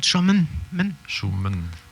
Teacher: Le I court, il est presque inexistant. On part directement du M au N. Ouais. Comme si tu recollais tes 2 consonnes.